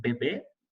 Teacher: tendríamos aquí, por ejemplo, la B bilabial como en bebé.